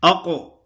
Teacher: قاف موٹا بھی ہے اور قاف میں صفت قلقلہ ہے۔ اکثر لوگ پڑھتے ہیں ثم اقررتم، اقررتم، ایک تو باریک پڑھتے ہیں، موٹا قاف باریک قاف سے بدل جاتا ہے، اور دوسرا اس میں جو صفت لازمہ ہے وہ ادا نہیں ہوتی، صفت لازمہ یعنی قلقلہ۔